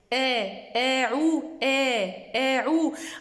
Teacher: En fait, l'erreur, elle est dans le milieu de la langue. Quand je dis ou, je dois relever un petit peu le milieu de la langue.